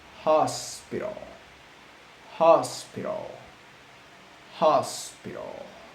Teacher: the gap between our vocal cords is used to produce uh audible friction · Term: glottal